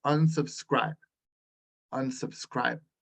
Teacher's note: The stress is on scribe.